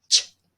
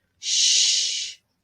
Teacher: CH has like a little T sound before it. Ch. You stop the airflow first. Ch. But SH is a continuing sound.